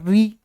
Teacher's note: जब मैं ऋ बोलूंगा तो जीभ टकराएगी ऊपर। ऋ जीभ टच कर गई तो बाहर निकला ऋ।